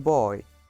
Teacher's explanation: The last one is Oi diphthong. The first part of this diphthong is slightly more open than O long vowel and glides toward I, which is in the closed front position, as in boy.